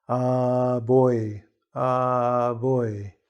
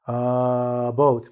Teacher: the b, how the lips come together to make more of a vibration